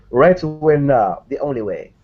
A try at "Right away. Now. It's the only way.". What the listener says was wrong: You need to pause more.